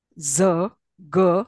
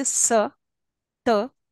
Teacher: z, g are all voiced. When I say s, t, all these are voiceless.